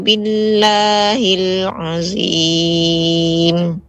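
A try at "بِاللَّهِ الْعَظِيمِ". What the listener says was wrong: Perhatikan Ummu, dha ini sama makhrajnya dengan zal. Dha. Iya, bukan sama ke zai. Jadi bukan azim, bukan. Namun azim sama seperti dha. Bedanya za tidak tebal, dha tebal. Azim. Billahil azim.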